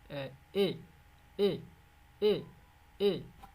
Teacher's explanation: মুখটা এরকম প্রশস্ত করে দিবা, এটা হচ্ছে লিপস প্রশস্ত হবে, স্প্রিড হবে